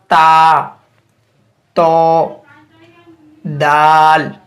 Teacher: ज़बान की नोक जब ऊपर सामने वाले 2 दांतों की जड़ से लगे तो इससे ता, दाल, तो अदा होते हैं